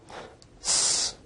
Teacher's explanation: S is a voiceless alveolar fricative